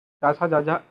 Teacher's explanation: तालव्य व्यंजन, जिन वर्णों का उच्चारण करने पर जीभ हमारे ताल को स्पर्श करती है।